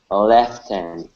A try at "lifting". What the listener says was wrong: we're going to use the short I instead of left it is lifting